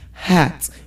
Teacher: Now you're throwing the letter H away, but the letter H has to be pronounced in that word.